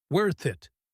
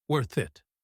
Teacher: In fast speech, worth it links perfectly. Worth it. The TH sound flows into the I sound.